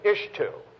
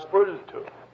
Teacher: A sibilant before a dental becomes an L.